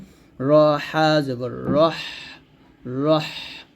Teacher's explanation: হাটা একটু চাপ দিয়ে চিকন করে নিয়ে আসতে হবে